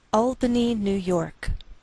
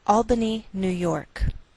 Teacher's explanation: note that we treat New York as one word and we place more stress on the second part York